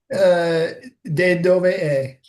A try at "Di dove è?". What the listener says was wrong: No, no, it's not they. Di dove è? Di dove è? Di dove è?